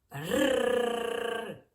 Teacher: губи зуби розімкнені але язик вібрує і м'яке піднібіння заважає вільному проходу повітря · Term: звук р твердий